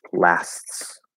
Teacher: So here again, that TS, just like we saw with what's or its, there's no actual T there. There's the illusion of the T as we close up, but then push that S back through the T.